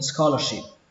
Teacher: Xuống giọng âm cuối cùng